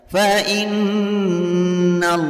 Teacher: Fa'u fa innal, fa in hukum bacaan gunnah musyaddadah karena ada nun yang bertasydid. Cara membacanya bunyi i dimasukkan ke na sambil ditahan dan mendengung sampai 2 harokat.